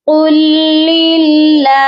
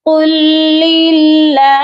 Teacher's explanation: اینڈ پر ہا کی آواز ضرور آنی چاہیے. قل للہ کر کے نہیں چھوڑنا, ہا کو آپ نے ساکن کرنا ہے.